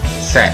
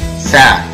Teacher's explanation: a boca mais aberta do que para o som E, os lábios um pouco mais tensionados, a língua repousa na base da boca. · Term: som EA